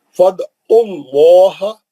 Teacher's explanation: عین کے پیش سے اللہ میں چلے جائیں گے. فد اللہ، لام جلالہ موٹا پڑھیں گے